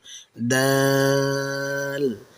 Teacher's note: জিহ্বার আগা সামনের উপরের 2 দাঁতের গোড়ার সাথে আলতো করে লাগিয়ে বলুন দাল। এটি উচ্চারণ করার সময় একটা মিষ্টি ও স্পষ্ট আওয়াজ হবে।